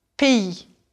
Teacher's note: it has an S, and no, you don't hear it unless it comes before a vowel